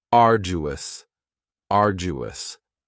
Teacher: you don't hear that D sound that much. It's not very strong. It almost sounds a little like a J